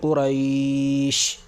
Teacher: کیوں؟ اس لیے کہ حرف لین کے بعد سکون وقف کی وجہ سے آ رہا ہے، لہٰذا یہاں پر مد ہوگا اور 3 الف کے برابر کھینچ کر پڑھا جائے گا، جیسے قریش۔ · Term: مد لین عارضی وقفی